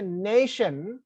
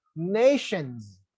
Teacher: when I say nation, stress is on na